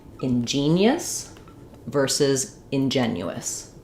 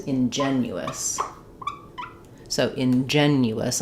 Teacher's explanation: they're both stressed on the second syllable. They both have the same in sound at the beginning. Unstressed I in.